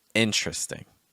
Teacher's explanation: called dropped syllables or syllables that are not actually pronounced so what would be a four-syllable word becomes actually just a three-syllable word